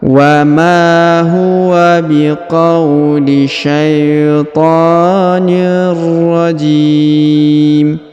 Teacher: huruf J dipanjangkan, boleh 2, boleh 4, boleh 6 harokat karena di depan huruf J terdapat ya sukun atau ya mati sebelum huruf pemberhentian, dan huruf pemberhentian huruf min disukunkan atau dimatikan karena berada di ujung ayat atau di ujung bacaan kita.